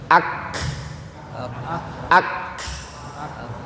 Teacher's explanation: huruf kaf itu ditempelkan dulu baru dia keluar anginnya.